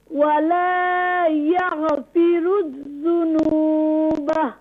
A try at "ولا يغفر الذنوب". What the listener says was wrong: Don't do قلقلة.